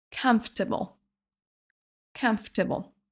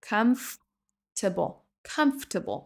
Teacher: On dit pas comfortable mais on va sauter la deuxième syllabe et ça nous donne comfortable